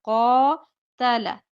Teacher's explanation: قاف موٹا قاتل تا اور لام باریک